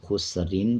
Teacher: خسرین پڑھا جائے گا اور را کو باریک پڑھا جائے گا۔ جب وقف کریں گے تو را کو پر پڑھیں گے۔